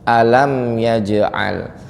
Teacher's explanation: Ini ada jim sukun Bapak Ibu ya, dibaca qalqalah.